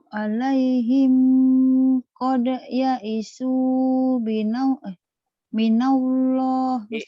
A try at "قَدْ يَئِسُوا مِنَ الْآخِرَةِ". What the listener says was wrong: Qad ya'isu minal akhiratihim bukan minallah. Minal minal akhirati.